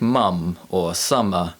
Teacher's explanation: look at our first nasal sound now the um sound is produced by pressing our lips together and using our vocal cords to produce a sound from the back of our throat out through the nose